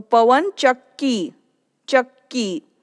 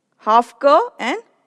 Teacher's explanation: the pronunciation of first ka is half and then the second ka pronunciation is full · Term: half ka and full ka